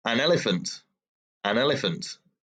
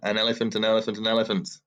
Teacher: here an is followed by elephant so an elephant an elephant just sounds like one word an elephant because the n is the consonant the e is the vowel and those words just naturally fit together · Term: sound linking